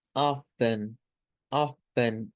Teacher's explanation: Se lee como si no existiera la T.